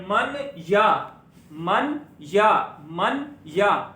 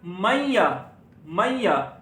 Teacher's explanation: नून की आवाज फिर हाइड हो जाएगी, चुप जाएगी, मन या से बन जाएगा मैया। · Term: इदगाम